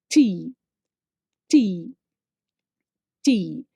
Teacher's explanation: Our tongue tip has to touch the front position of our teeth ridge, but inside teeth. Okay, it will not touch any other part, only the front part.